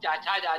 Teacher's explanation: आप बोलकर देखिए, जब आप चाचा जाझा बोलेंगे तो जिह्वा तालु की ओर जाएगी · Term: तालव्य